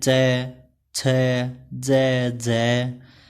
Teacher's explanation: जब मुख द्वार को बंद करके इस प्रकार बोलते हैं कि हवा स्थानों को कुछ रगड़ती हुई चलती है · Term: स्पर्श संघर्षी